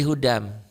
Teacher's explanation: Dimasukkan diidghamkan bi dengan gunnah disertai dengan dengung. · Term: idgham bi gunnah